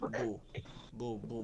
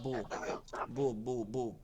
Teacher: ঠোঁটটা কি হয়ে যাবে, চ্যাপটা নয়, গোল হয়ে যাবে। আর ওই বুই বলবো, বাপের যে উচ্চারণটা আছে ওইটাই হবে, খালি ঠোঁটটা গোল হয়ে যাবে। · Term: বা পেশ বু